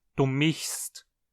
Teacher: Já se você fala uma forma mais moselana e usa verbos superfortes, você provavelmente diz du michst, sem chiar o S.